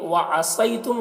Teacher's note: वअसयतुम, सौद को पुर पढ़ेंगे और यहाँ पर या लीन है, इसे नर्म आवाज़ के साथ जल्द पढ़ेंगे, मारूफ पढ़ेंगे और मजहूल आवाज़ से बचेंगे।